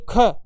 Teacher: ख जब हम बोलते हैं वो महाप्राण होते हैं, उसमें अधिक प्राणवायु निकलती है। क होता है वो अल्प प्राण होता है, उसमें कम प्राणवायु निकलती है यहाँ पर।